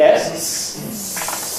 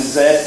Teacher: You can hear the buzzing for the Z there quite easily